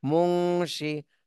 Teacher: নুন সাকিনের পরে ইকফার হরফ এজন্য এই নুন সাকিনে ইকফা গুন্না করতে হবে